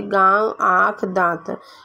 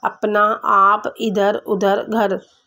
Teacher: ऐसे स्वर का उच्चारण नाक और मुंह से होता है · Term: अनुनासिक